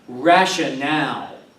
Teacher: rationale, with the accent on the last syllable